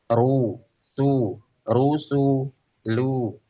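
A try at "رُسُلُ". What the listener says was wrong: Rusulu. Nah, sinnya ditipiskan lagi. Rusulu, rusulu.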